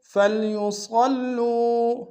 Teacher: لم يصلوا فليصلوا، صاد کو موٹا ادا کریں گے، لام کے اوپر شدہ زور دیں گے، واو مد ہے، 1 دار میں کھینچیں گے۔